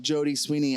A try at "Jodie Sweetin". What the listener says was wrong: Jodie Sweetin, yeah. Jodie Sweetin. You said Sweeney, but yeah, it's the same thing.